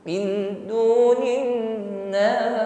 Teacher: Namun karena kita waqaf berhenti di situ, maka hukumnya menjadi mad arid lisukun. Nas itu boleh dipanjangkan 1, 2 sampai 3 alif ya.